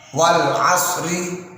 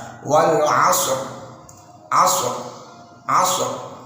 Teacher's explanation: Ro-nya diwakafkan sebelum huruf ro, huruf sukun, sebelum sukun huruf fathah. Nah, dihukumi tafkhim atau tebal, maka pangkal lidah harus diangkat